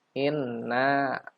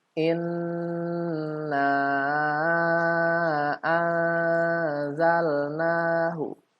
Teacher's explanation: karena ini nun bertasydid maka harus gunnah, langsung disambut dengan mat